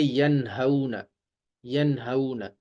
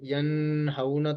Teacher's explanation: نون ساکن کے بعد ہا آ گیا ہے جو کہ حروف حلقی میں سے ہے، تو اس لیے یہاں پر غنہ نہیں ہوگا، اس کو پڑھیں گے ینہون، ینہون۔